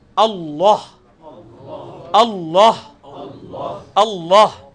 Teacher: لیکن ہم چونکہ عربی میں وقف کرتے ہیں تو اللہ پڑھتے ہیں, لیکن وقف کرتے ہوئے یہ پیش جو ہے وہ جزم میں بدل جاتی ہے